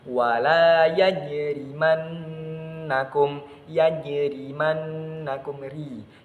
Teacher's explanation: Jadi ra-nya dibaca secara tipis atau tarqiq.